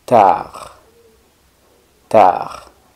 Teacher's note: Tarde en francés es muy similar, sería simplemente sin la E, pero la D del final no se pronuncia